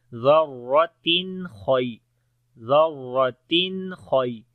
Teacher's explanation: تنوین کے بعد حروف حلقی میں سے خا آ گیا تو اظہار ہوگا، نون کی آواز کلیئر پڑھیں گے ظاہر کر کے